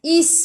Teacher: Is bunyikan sifat huruf sin sofir